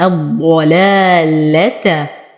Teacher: اللام شمسية لا تنطق، هذه الألف للتفرقة، فأنتقل من ضمة الواو إلى تشديد الضاد المفخمة الضلال. ألف ساكنة ما قبلها مفتوح فهو من الطبيعي حركتين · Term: مد طبيعي